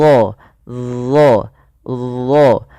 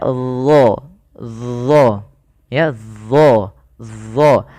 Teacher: pangkal lidah kita kita angkat ke langit-langit agar menempel ya supaya menebalkan huruf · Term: istila